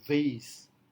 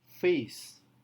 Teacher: maka V seringkali diucapkan sebagai F